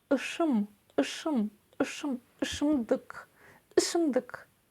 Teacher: Снова вспоминаем, что это нечто среднее между буквами «ы» и «и». Произносится это на полуулыбке, и кончиком языка мы тянемся к нижним зубам.